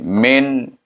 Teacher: Min. Jangan dengung dan jangan panjang. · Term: izhar halqi